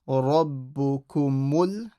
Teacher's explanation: This meme will join to the lam.